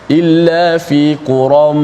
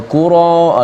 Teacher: Suara tanwin tu dimasukkan ke dalam mim yang selepas itu. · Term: idgham